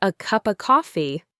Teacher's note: The F sound in of is often dropped before a consonant.